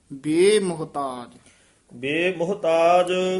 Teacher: ਬੇਮੁਹਤਾਜ ਇਕੱਠਾ ਹੀ ਪਾਠ ਹੈ ਥੋੜਾ ਜਿਹਾ ਲਮਕਾ ਕੇ ਬੋਲਣਾ